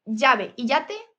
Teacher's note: el yeísmo, que llave y yate se pronuncian igual.